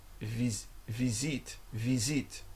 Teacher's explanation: Spelled the same, but it takes that Z sound when it's placed between two vowels. So apparently it's the same in French, and it's visite, visite.